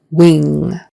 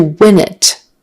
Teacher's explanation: wing with a long E and an ing nasal in the back versus win with a short I and an N in tongue up front